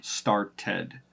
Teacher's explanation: we add that supplemental e sound in between the final consonant and the D at the end